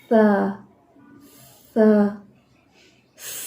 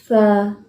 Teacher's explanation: سا تو ہم نہیں پڑھ رہے, لیکن ہم پڑھ رہے ہیں زبان باہر نکال کے سا. تھوڑا سا سانس نکل رہا ہے اس میں. اس کا مطلب ہے سا کی ادائیگی میں بھی ہمس ہے.